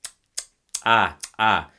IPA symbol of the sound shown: ǂ